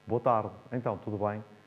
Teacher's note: O som não é desagradável de todo, mas a voz está tensa, está colocada aqui, nas vossas cordas vocais e no pescoço.